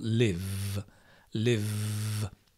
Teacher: voiced means if you say for example live live you can hear or feel there's a vibration a voice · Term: voiced consonant